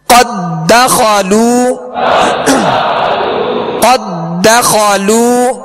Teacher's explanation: اظلموا قد دخلوا, اب یہاں ادغام مثلین تام ہے, یعنی قد داخلوا نہیں پڑھیں گے, دال کو دال میں مکمل داخل کریں گے